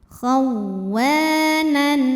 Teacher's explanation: Khawwanan ada hukum idhar halqi, karena ada tanwin fathah menghadapi huruf halqi atau huruf tenggorokan ya. Maka tanwinnya ini tetap N, dibaca jelas.